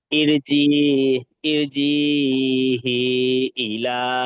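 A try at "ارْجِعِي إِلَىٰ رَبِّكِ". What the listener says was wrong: এখানটা হা হবে আচ্ছা, এখানে আপনি হা উচ্চারণ করেছেন ওই জন্য। না, এটা আইন জের ই, ইরিজি ইলা, ইরিজি ইলা।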